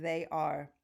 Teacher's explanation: the word are, A-R-E, as in they are, is completely schwa.